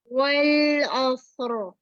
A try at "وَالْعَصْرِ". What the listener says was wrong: لام کا مخرج مکمل نہیں ہو رہا، پورا زبان کی نوک تک ادنا حافہ کو لگائیے. والعصر، را کو ہلائیں گے نہیں، را میں توسط.